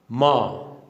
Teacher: नासिक्य का अर्थ होता है नाक, यानी जिनका उच्चारण नाक से करते हैं। उच्चारण के समय हवा केवल नाक से निकलती है, इसलिए इन्हें नासिक्य व्यंजन कहते हैं।